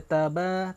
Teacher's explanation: Ba di situ dari segi makhraj dia di bibir, di mana bibir atas jumpa bibir bawah.